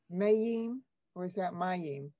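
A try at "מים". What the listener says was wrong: Mayim. Good.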